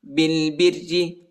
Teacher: را کو باریک پڑھنا ہے